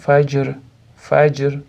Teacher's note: j ni qalqalasini berib, r da sukunini sekin yumshoq berib to'xtaymiz